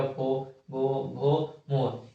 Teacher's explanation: उसके बाद आता है ओष्ठ, बिना ओष्ठ को सटाए हुए, बिना होठ को सटाए हुए हम पो वर्ग का उच्चारण नहीं कर सकते। जैसे पो बोलेंगे तो होठ को सटाना पड़ेगा